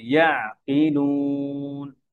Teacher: ইয়া মোটা করে না, আইন পাতলা করে